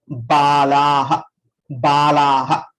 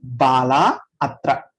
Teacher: The visarga will be elided. So there is a, we have to eliminate that visarga. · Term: elision of visarga